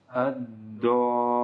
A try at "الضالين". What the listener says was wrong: Itu nggak ada nabarnya. Itu masih tebal.